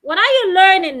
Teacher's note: is a wh question so you fall